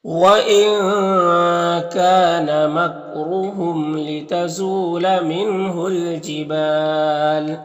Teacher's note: جبال میں وقف کریں گے تو مد عارض وقفی ہوگا